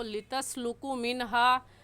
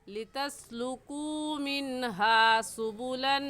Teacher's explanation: वाव मद्दा को एक अलिफ की मिकदार खींच कर पढ़ते हैं